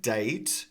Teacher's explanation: Date is pronounced like this. And then the T is unreleased.